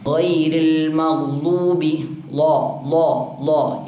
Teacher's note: നാവിൻ്റെ അരിക്, നാവിൻ്റെ അരുനീളം, സൈഡ് ഭാഗം മേലെ പല്ല്, അണപ്പല്ലിൽ തട്ടണം. ഒന്നെങ്കിൽ വലതു ഭാഗത്ത് അണപ്പല്ലാകാം, ഇടതു ഭാഗത്ത് അണപ്പല്ലാകാം.